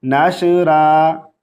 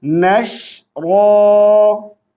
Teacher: रा को बारीक आवाज से नहीं पढ़ेंगे और शीन पर कलकला नहीं करेंगे